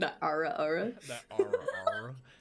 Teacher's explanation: you're saying that with more breathiness going outward and the back of the tongue is hitting the the roof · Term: southern accent